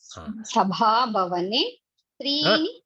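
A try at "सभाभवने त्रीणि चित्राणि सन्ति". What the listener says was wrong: You missed the Mahaprana for the next.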